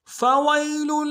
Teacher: اگلی آیت فويل للذين يكتبون الكتاب يكتبون الكتاب بأيديهم فويل للذين يكتبون الكتاب بأيديهم فويل فا کو نرمی سے ادا کرنا ہے، واو کو یا کے ساتھ ملائیں گے، یا لین ہے بغیر کھینچے پڑیں گے، اور لام کو اگلے لام کے ساتھ ملانا ہے، لام کی تنوین کو اگلے لام کے ساتھ ملائیں گے، لام کے اوپر تشدید ہے زور دیں گے.